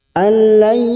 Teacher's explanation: nun sukun bertemu ya idgham biguna di sini siap masuk dan mendengung, masuk pada huruf ya dan ditahan selama 3 harokat. Alayyaqo qaf sukun yang mati asli di tengah kalimat qalqalah sugro.